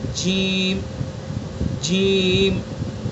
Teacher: جیم کا مخرج ہے زبان کا بیچ اور اس کے مقابل اوپر کا تالو۔ زبان کا جو یہ بیچ کا حصہ ہے، اس بیچ کے حصے کو بالکل اوپر تالو پر لگا دیں گے، ادا کریں گے جیم جیم۔